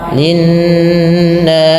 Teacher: Linnasi ditahan suara nunnya, gunnah